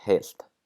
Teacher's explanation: like in the word heilt, we have the voiceless L